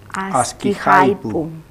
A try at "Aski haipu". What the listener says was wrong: Hay un poquito falta articular este sonido pu de haipu.